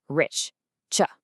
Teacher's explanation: Put a couple of fingers on your throat and say rich, ch. All you feel is a puff of air, right?